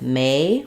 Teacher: It sounds like may with the A diphthong that slides. And then letters OR say the ER sound in this word.